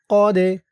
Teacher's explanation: কদে এই দালটা কলকলার হরফ, ধাক্কা দিয়ে পড়তে হবে।